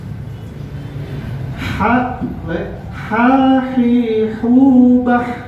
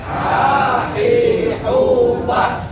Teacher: Jangan ada getaran, karena dia bukan kho. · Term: huruf H